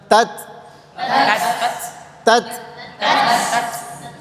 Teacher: Sifat hams itu berarti ada udara yang keluar saat disukunkan.